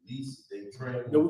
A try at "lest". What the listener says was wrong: That word least is more accurately pronounced lest. It's like unless today. Like if you do this, lest, meaning if you do it, they will.